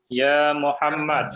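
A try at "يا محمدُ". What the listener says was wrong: Dibaca aja akhirnya ya Muhammadu.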